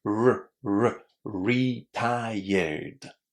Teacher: this R sound is a really soft sound. Yeah. Your tongue is not touching the roof of your mouth.